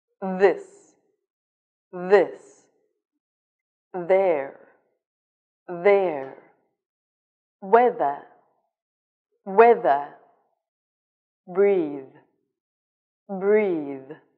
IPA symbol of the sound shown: ð